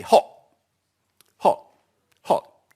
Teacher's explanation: And they don't say, as their grandmother would do, it's very hot today, hot. They say hot, hot, hot, dropping the T.